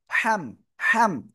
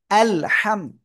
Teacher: হামিম জবর হাম, হাম, হাম। গলাটা চেপে বলতে হবে হাম